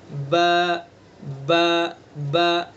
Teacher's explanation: हमारे दोनों होठ हैं, एक है खुश्की वाला हिस्सा, बाहर का हिस्सा जो खुश्क रहता है, और एक है अंदर का हिस्सा जो तर रहता है। जो तर वाला हिस्सा है, ये दोनों तरी के हिस्से को हम टच करेंगे, मिलाएंगे आपस में और बा को अदा करेंगे।